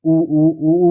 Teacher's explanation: जब भी आप इन स्वरों का उच्चारण करेंगे तो जीभ मुंह के पिछले भाग में चली जाती है। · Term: पश्च स्वर